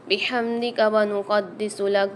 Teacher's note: دال کے اوپر دوبارہ سے مشدد آ رہی ہے تو یہاں پر ہم سختی اور جماؤں کے ساتھ پڑھیں گے